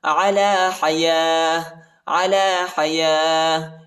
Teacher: وقف کی صورت میں تا کو ہا پر تبدیل کریں گے